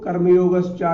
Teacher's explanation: श्री भगवान उवाच, भगवान ने कहा संन्यासः कर्मयोगः च, पदविच्छेद किया तो कर्मयोगश्चा का यहाँ पर इसको पहचान ले, ये सा तालव्य सा है, इसका उच्चारण स्थान चा के पास से होता है, जहां से हम चा बोलते हैं वहीं से हम सा बोलते हैं, तो तालव्य वर्ण है, ये तालव्य सा है।